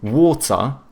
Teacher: the British, they tend to have either hard T's or they do like the glottal T